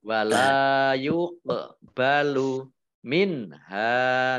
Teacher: Wala yuqbalu minha, nun sukun bertemu dengan huruf ha, bacaan idhar dibaca jelas.